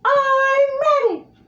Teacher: I haven't really practiced too much on him, but it's a higher pitch, and make sure you have that I'm ready. So it's kind of like neutral voice, and then you're doing the high pitch.